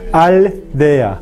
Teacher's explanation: La lengua debe viajar de la zona alveolar hacia la zona dental.